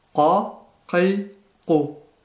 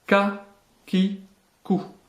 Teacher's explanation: Une nouvelle lettre emphatisée, le qaf, qa, qi, ku, qui est vraiment différente du kef, prononcé comme un K français, ka, ki, ku.